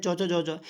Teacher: च ज के वर्ग में आता है। तो वो तालु से बोले जाते हैं